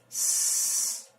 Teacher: if you put your tongue too low, then what will come out when you try to pronounce the th sound will be the s sound